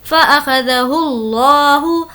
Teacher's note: لفظ اللہ کو پر پڑھیں گے کیونکہ اس سے پہلے پیش ہے